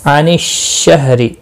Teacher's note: را زیر کی وجہ سے باریک پڑھا جائے گا